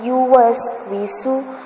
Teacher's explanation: last میں جو سین آ رہا ہے اس کو لمبا نہیں کرنا